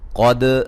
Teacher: قد قاف کو موٹا، دال پہ قلقلہ